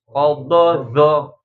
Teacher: Zo itu ujung lidah menyentuh dengan ujung gigi seri depan atas.